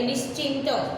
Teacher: વિસર્ગ પછી ચ, છ કે શ ધ્વનિ હોય તો વિસર્ગનો શ થાય